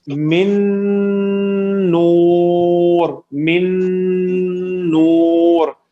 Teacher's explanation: نون ساکن کے بعد نون ہی ہے, تو یہاں پہ فل ادغام ہوتا ہے